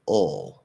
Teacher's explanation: And then if I go to ul, okay, well, it sort of feels like I have the schwa that's being like, it's almost like the schwa is being pushed into the back of the tongue